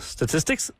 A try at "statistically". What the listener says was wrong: But with the LY.